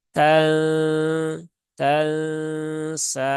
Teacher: dia dibaca dengan samar dan kemudian ada ghunahnya di situ maka tunaikan dulu ghunahnya ya sempurnakan ghunahnya ditahan tiga harakat baru · dan kemudian ada ghunahnya di situ maka tunaikan dulu ghunahnya ya sempurnakan ghunahnya ditahan tiga harakat baru pindah ke huruf berikutnya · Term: ikhfa Hakiki